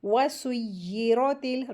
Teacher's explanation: را کے اوپر زبر لگی ہے تو را کو ہیوی کر کے پڑھیں گے. را ساکن کے جو رول ہیں اس میں را کے اوپر جب بھی زبر یا پیش لگی ہو تو را کو ہیوی کرتے ہیں، را کا رول ہے.